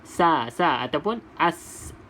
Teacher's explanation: Kalau sin, hujung lidah kena gigi bawah. Gigi bawah belah dalam ni.